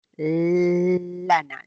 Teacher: Al momento de producir una L, la lengua, el ápice queda pegado en la zona del alveolo, porque una L es alveolar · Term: lateral